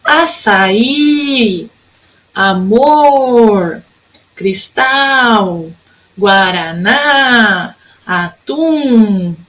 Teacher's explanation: Todas as sílabas fortes são as últimas.